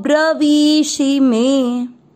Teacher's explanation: मैंने वी की मात्रा को ज्यादा तेज पढ़ा है शी की मात्रा से